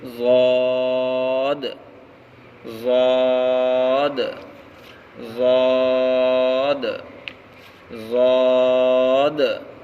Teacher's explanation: ضاد کا مخرج زبان کی کروٹ اور اوپر کے ڈھاڑوں کی جڑ